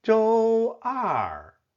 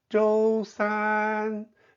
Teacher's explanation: In real conversation, for example, if someone asks you which day of the week do you go to Beijing, then the numbers 一、二、三 in your response are the syllables that need to be emphasized and stressed